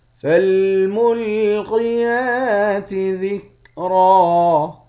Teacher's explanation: قاف کو موٹا پڑھیں گے، یا پر کھڑا زبر ہے، ایک الف کی مقدار کھینچیں گے ، آخر میں دو زبر کی تنوین ہے، دو زبر کی